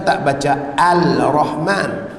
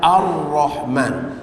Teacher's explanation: kita tak baca al-rahman kita baca ar-rahman jadi lam tu seolah-olah tak wujud ya pada ar-rahman tu ya ar-rahim assirat allazina adallin semua lamnya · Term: idgham Syamsi